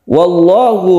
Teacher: lafadz Allah yang lam jalalah dibaca tafkhim karena sebelumnya ada fathah dibaca tebal